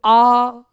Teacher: जब मैं आ कह रहा हूं तो मेरा मुंह पूरा खुल रहा है, ज्यादा खुल रहा है।